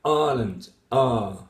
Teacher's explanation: You start with 3, as in Ireland, I plus the schwa. You have 3 vowel qualities, and then you turn it into 1 long vowel, like Ireland, ah. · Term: monophthonging